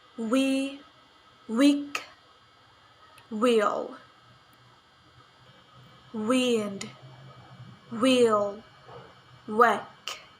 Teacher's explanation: voiced labiovelar approximant sound wa